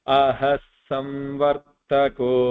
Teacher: I combined the visarga with the sa